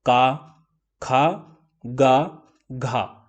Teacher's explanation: और गले को हम क्या बोलते हैं कंठ है ना तो कंठ के पास से इनका उच्चारण हो रहा है · आपने नोटिस किया कि सारे जो वर्ण हैं इनका उच्चारण स्थान क्या है, गले के पास में है, गले के पास में।